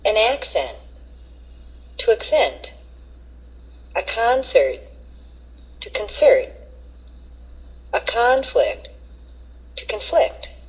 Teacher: change the stress from the first syllable for nouns to the second syllable for verbs